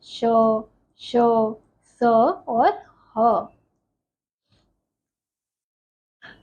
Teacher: इन व्यंजनों का उच्चारण करते समय श्वास मुख से रगड़ खाकर निकलती है तथा ऊष्मा अर्थात गर्मी पैदा करती है, इसलिए इन्हें क्या कहते हैं, ऊष्म व्यंजन कहते हैं।